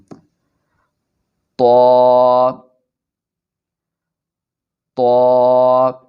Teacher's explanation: طا کو پڑھتے وقت زبان کی نوک کو اوپر کے سامنے والے دو دانتوں کی جڑ سے ملائیں گے۔